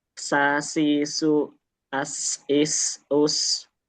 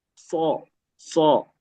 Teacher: kalau sin sendiri itu tipis, sai, su, as, is us, shad dia itu seperti sin cuman versi yang tebal